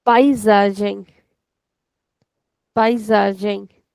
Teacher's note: the letter S is coming in between two vowels, and whenever this will be the case, then the S is equal to Z. The sound is of Z.